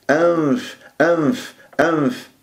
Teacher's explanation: تجيب الثنايا العليا لباطن الشفة، ولا تقفل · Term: الغنة